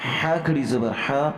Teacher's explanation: ح جو ہے حلق سے ادا ہوتا ہے لہٰذا اسے حلق سے صحیح مخرج سے ادا کرنا ہے، اسے ہا نہیں بولنا